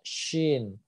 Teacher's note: Huruf shin itu adalah makrosnya tengah lidah ketemu langit-langit.